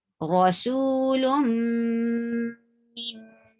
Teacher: you are keeping the sound in your nose for 2 haraka long. And that is called what? Gunna.